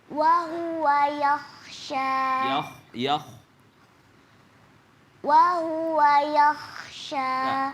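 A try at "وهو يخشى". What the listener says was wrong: Kho itu di tenggorokan atas ya dan tebal. Ya, dia termasuk huruf isti'la. Ya, yakhsha. Ke belakang. Yakhsha. Kho itu ya.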